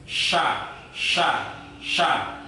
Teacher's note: Keluarnya huruf disertai dengan angin yang menyebar di atas lidah. Ketika kita mengucapkan huruf shin, maka angin yang ada di dalam mulut itu dikeluarkan, dan mengeluarkannya itu di dalam mulut ini nyebar ke ya semuanya di atas lidah itu. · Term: tafashi